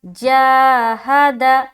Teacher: آگے چلیں، جاہد، جیم الف زبر جا، ہا زبر ہا، جاہ، دال زبر دا، جاہد۔ جا کو ہم نے کھینچا کیونکہ یہاں پر ہم الف مدہ کر رہے ہیں، ہا کو جلد پڑھیں گے اور دال کو بھی جلد پڑھیں گے۔ بعض اوقات یہاں پر لوگ غلطی کرتے ہیں، پڑھتے ہیں جاہدا، ایسا پڑھتے ہیں، تو غلطی کیا ہوئی کہ دال کو بھی انہوں نے لمبا کر دیا، جبکہ دال کو لمبا نہیں کرنا ہے۔